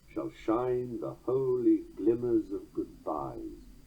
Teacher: Scudding over the of and making the foot Pyrrhic does not sacrifice the metre